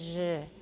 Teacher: So just take a sh and add voicing, and that's a zh.